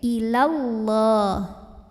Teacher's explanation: sedangkan apabila tidak berhenti Mad Thobi'i nya gugur lamnya tetap pendek illallah Kenapa karena ada dua huruf sukun bertemu huruf surpet huruf